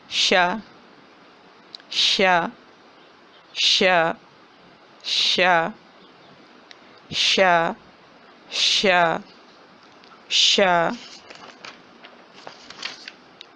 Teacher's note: زبان کی جو درمیان والا حصہ ہے اس کے سائڈیں جو ہیں وہ اوپر تالو سے لگ رہی ہیں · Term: شین